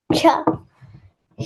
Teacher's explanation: our tongue is touching the tip of roof of our mouth. That's why it is palatal.